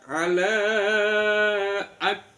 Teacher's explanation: Ditahan di k, tepatnya k, kemudian dilepas ada suara angin